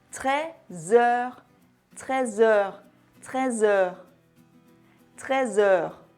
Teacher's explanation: Tu prends le son Z à la fin de 13 et le lis au son E au début du mot heure. Et c'est donc plus fluide et enchaîné, passant de l'un à l'autre.